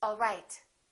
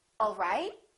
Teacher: one is falling intonation and one is rising intonation